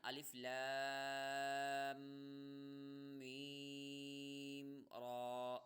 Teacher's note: لام کو کھینچ کر فوراً غنہ کر لیں گے، یا غنہ اگر آپ نہیں کرتے تو کھینچ کر فوراً ملا دیں گے.